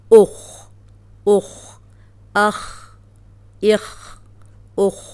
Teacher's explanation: اب یہ خو موٹا ہے، جزم کے ساتھ بھی ہم موٹا ہی پڑھیں گے۔